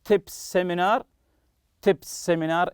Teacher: it's as if it's one s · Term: link two consonants